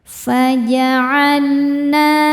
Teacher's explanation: Sebab huruf nun berharakat fathah panjang. Cara bacanya huruf nun ini panjang dua harakat. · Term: mad thobi'i muqaddar